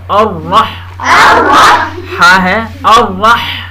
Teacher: را پر زبر ہے، اس لیے موٹا پڑھیں گا گول کر کے